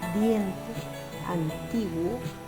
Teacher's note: cerrada seguido de una vocal abierta Como por ejemplo diente antiguo en este caso la vocal abierta es la que lleva la mayor fuerza de voz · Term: diptongo creciente